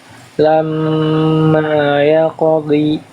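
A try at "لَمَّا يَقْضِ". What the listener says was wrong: Nah, yang ini ragu-ragu. Kuatkan lagi kayak tadi dotnya. Lamma yaqdi.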